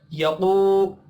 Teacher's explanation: क़ाफ हुरूफ मुस्तअलिया है, पुर पढ़ेंगे। वाव मद्दा को एक अलिफ के बराबर खींच कर पढ़ना है।